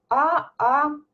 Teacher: Последний звук произносится длительно, пропевается